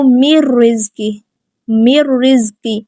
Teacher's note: ہم نے نون کو را کے اندر مکس کر کے ملا کے پڑھنا ہے، لیکن غنہ نہیں کرنا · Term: ادغام بغیر غنہ کے